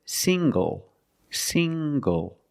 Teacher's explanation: The ng makes the nasal sound plus the hard g.